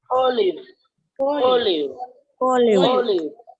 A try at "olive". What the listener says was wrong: It should be see, I am saying na O, you were pronouncing it right. But live, instead of live, you have to pronounce it as leave. L-E-A-V-E. Leave. O leave.